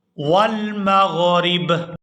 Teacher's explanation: یہاں پر وقف کریں گے تو وقف کی صورت میں با جو ہے یہ ساکن ہو جائے گی ، را کو با ساکن کے ساتھ ملا کر پڑھیں گے،